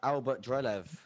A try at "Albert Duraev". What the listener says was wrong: There's not even an L in there. There's not even an L in there. You pronounce it with an L. Albert Dulaev, you said.